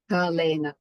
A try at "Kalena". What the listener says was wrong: For example, the English always want to make it like a p and a p.